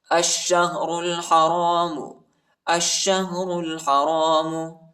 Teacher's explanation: شین پر شد آئی ہے، شین کو شدت کے ساتھ، سختی کے ساتھ پڑھیں گے